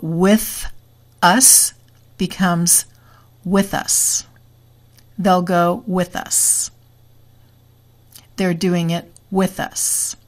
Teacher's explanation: the consonant sound will move to the vowel in natural speed English